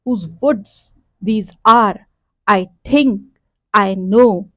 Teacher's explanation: unstress stress, unstress stress, और चार चार के सिलेबल्स ईच में हैं, और 8 पूरे सिलेबल्स बन रहे हैं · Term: iambic tetrameter